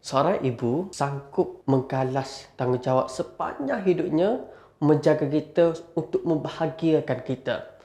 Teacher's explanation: Intonasi emosi, kita kena cakap dengan satu persatu juga tetapi dengan nada yang sangat rendah.